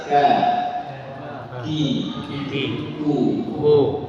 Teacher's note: Jadi ketika kita sebutkan huruf kaf tempat keluarnya sedikit di bawah huruf qaf, yakni persentuhan antara pangkal lidah dengan langit-langit yang keras dan yang lunak sekaligus